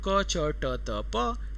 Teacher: क, च, ट, त, प, कंठ, तालु, मूर्धा, दंत, ओष्ठ, यहाँ इसका उच्चारण स्थान होता है